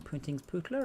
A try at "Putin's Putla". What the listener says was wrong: Putin's Putla, there's no N in it. Putin's Putla. Putin's not, not Puntang.